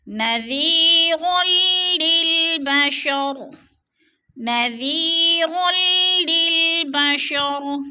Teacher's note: نذیر للبشر، نذیر، یا ساکن سے پہلے ذال کے نیچے زیر ہے تو یا مدہ ہو رہا ہے، یا مدہ کو ایک الف دو حرکات کے برابر ہم نے کھینچ کر پڑھنا ہے اور را کو لام کے ساتھ ملا کر ادغام کرنا ہے۔ را دو زبر لام مشدد تو ادغام ہو رہا ہے، سختی سے جمع کر پڑھنا ہے۔